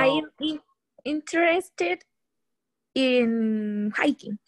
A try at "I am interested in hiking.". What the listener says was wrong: There you go.